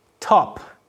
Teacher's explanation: in the first word top we have an aspirated stop